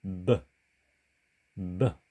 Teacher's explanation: 히브리어의 bet는 한글 자음 비읍과는 달리 유성음입니다. 그러니까 사실 b, b 이렇게 발음해 주는 것이 한글 자음 비읍처럼 발음하는 것보다 더 원어에 가깝다고 할 수가 있겠습니다.